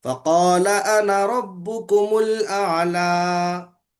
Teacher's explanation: अना के बाद अगर अलिफ आया तो उस अलिफ को खींचना नहीं, अना पढ़ना उसको